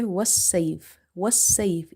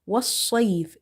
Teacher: you have to be very careful to read swad properly, heavy as well as by little bit rounding the lips. Otherwise, you will end up reading seen here if you say wassayf, wassayf. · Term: swad sound